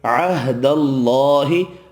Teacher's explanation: اللہ کا نام والا لام زبر کی وجہ سے پر پڑھنا ہے